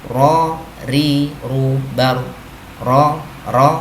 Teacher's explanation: ketika kita lafalkan, lidah kita bergetar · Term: takrir